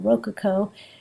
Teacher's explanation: you put the emphasis on the first syllable